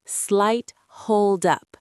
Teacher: The T in slight connects smoothly to the H in hold.